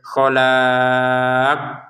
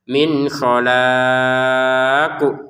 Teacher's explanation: Ujung-ujungnya qafnya kita pantulkan. Ya, jangan sekedar khalaq.